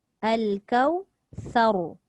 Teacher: Sa tu nipis lah. Tapi ra tu dihukumkan dengan bacaan yang tebal. Tak boleh baca kausar.